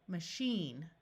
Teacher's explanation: the A will schwa and sound like a short U, and the I will have a long E sound